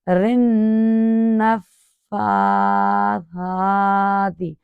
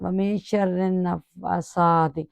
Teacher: نون مشدد پر بھی ایک گنہ کی مقدار ایک الف کی ہے